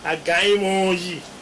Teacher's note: the preceding nasal vowel, nasal consonant mi, is going to turn into a nasalized o, and that is where you have a gaimo yi.